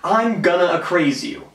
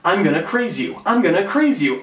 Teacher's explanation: Given the fact that the craze part of the word a craze forms the stressed syllable, the unstressed syllable A dropped off in casual speech. A craze became craze. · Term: Aphoresis